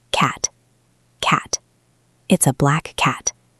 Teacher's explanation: The tongue goes to the position of the t but it stays there. It does not release.